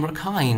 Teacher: the k is aspirated like in English